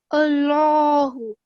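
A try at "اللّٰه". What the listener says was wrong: But my mistake again, it's a stop here. So we're going to round it off and put a sakin on. So it's Allah.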